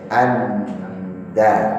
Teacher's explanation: Ujung lidah ketemu gusi, tempat tumbuh gigi yang atas seri. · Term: dal